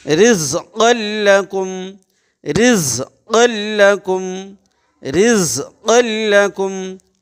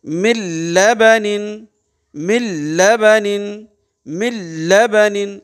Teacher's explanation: نون حذف ہو جا رہا، اس کی آواز ناک میں نہیں جائے گی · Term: ادغام